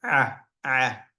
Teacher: The ayn sound is a sound coined from the middle of the throat. It's a unique sound and no English word sounds like it.